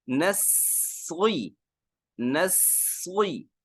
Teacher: نسوی، نسوی، نسی غلط، ایک تو صاد میں سیٹی کی آواز پیدا کریں گے، دوسرا صاد کو موٹا کریں گے